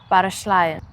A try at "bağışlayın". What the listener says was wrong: It's without R, just her. That's a hard one.